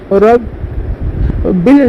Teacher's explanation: با کے اوپر تشدید ہے، اس کو دو مرتبہ پڑھیں گے، ایک بار پچھلے والے حرف سے ملا کر ایک بار خود سے